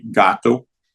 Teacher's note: Velar es que el aire está bloqueado en la garganta, como K o la G fuerte de gato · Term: sonidos velares